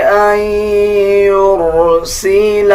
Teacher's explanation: نون کے اوپر جزم آ جائے، اس کے بعد یا کے اوپر شد آ جائے، تب بھی ہم ناک سے آواز نکالتے ہیں یعنی غنہ کریں گے۔